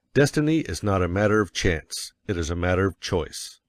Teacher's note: you will want to emphasize destiny, for it is the principal idea in your declaration. And you will put some emphasis on not, else your hearers may think you are affirming that destiny is a matter of chance. · And you will put some emphasis on not, else your hearers may think you are affirming that destiny is a matter of chance. By all means, you must emphasize chance, for it is one of the two big ideas in the statement. Another reason why chance takes emphasis is that it is contrasted with choice in the next sentence.